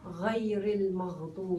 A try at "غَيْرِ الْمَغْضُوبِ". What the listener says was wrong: Heavier. You have to elevate the back of your tongue. Raise it a little bit. The back of the tongue. Here is the tongue. Here. You elevate this part. And it should touch here a little bit.